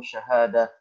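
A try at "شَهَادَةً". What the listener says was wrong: Jangan dimatiin, jangan sukunin. Syahada? Syahadatan.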